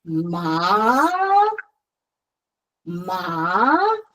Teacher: for second tone, you go from the lowest of your voice range to the highest.